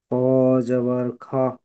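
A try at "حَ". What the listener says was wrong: এটা খ নয়, জি এটা হা। হা, হা জাবার হা।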